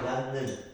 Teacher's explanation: 니은의 영향을 받아서 디귿이 니은으로 발음되죠. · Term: 비음화